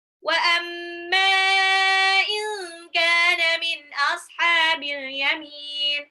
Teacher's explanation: Min ashabi nun sukun ketemu alif itu izhar dibaca jelas.